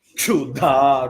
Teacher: And not only the chu you have to give the stress, chu. Dha also is Mahaprana.